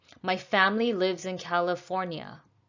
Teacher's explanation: the last syllable goes down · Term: falling intonation